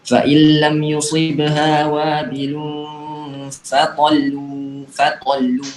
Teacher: tahannya sekedar untuk menunjukkan ada tasydid saja. Jadi nggak ditahan lama seperti nun dan mim ketika mereka hidup.